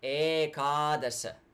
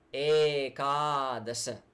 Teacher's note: first 2 vowels are long